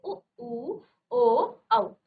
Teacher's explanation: जिन स्वरों के उच्चारण में होठों का आकार क्या हो जाता है, गोल हो जाता है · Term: वृत्ताकार स्वर